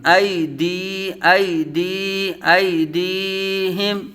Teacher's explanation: ساکن، ایدیہم، ایدیہم، حروف لین کو بغیر کھینچے بغیر جھٹکا دیے، یا مدہ کو ایک الف دو حرکات کے برابر کھینچ کر پڑھیں گے